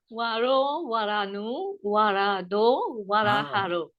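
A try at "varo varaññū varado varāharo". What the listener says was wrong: Great.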